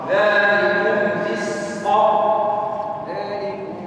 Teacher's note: الميم عند الفاء حكمها الاظهار